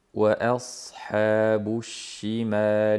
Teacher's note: Hamzani qattiq aytamiz va sodni ham yog'on ham sirg'altiramiz.